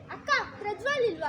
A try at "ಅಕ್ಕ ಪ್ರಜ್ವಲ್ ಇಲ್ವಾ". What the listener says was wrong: ಅಕ್ಕ ಕಟ್ ಮಾಡ್ಬೇಡ ಕಣೋ ಎಳಿ